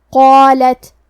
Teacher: ہم قاف کو موٹی آواز میں پڑھیں گے کیونکہ اس کے بعد مد الف ہے۔ مد الف اپنے پیچھے والے حرف کا حکم لیتا ہے تفخیم میں اور ترقیق میں، تو ہم مد الف کو بھی بھاری آواز میں ادا کریں گے۔